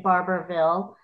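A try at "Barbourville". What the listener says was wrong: it's pronounced barville girl you don't pronounce the middle of it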